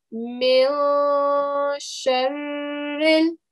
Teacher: So you need to make sure that when you're reciting it, because sheen is not one of your throat letters, you're going to hide the sound of the noon. So you're going to end up saying mil sharril.